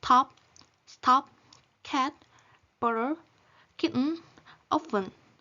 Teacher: T of top is aspiration T, T of cat is unreleased T, T of butter is flap, and T of kitten is glottal stop. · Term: allophones